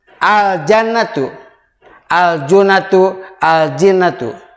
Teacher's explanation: Maka itu semuanya dibaca jelas membaca lamnya. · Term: idhar qamariyah